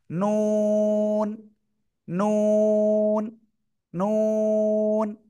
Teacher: জিহ্বার আগা তার বরাবর উপরে তালুর সাথে লাগিয়ে নুন উচ্চারিত হয়।